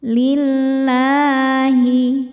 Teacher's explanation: Lam jalalah dibaca secara tarqiq karena harokat sebelumnya kasrah. Cara bacanya, lam ini dibaca dengan tipis. Lillahi. La ada hukum madnya juga, namanya mad tobi'i muqaddar karena ada baris fathah panjang di atas huruf lam.